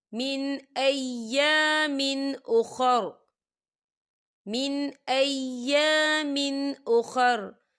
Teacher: یہاں نون ساکن ہے اور نون ساکن کے بعد حمزہ آ رہا ہے. حمزہ جو ہے حروف ہلکی کا ورڈ ہے، تو ہم اسے بنا غننے کے پڑھیں گے